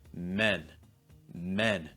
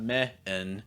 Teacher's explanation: No, it's not meh-en, it's men. It goes right from the eh sound into that n.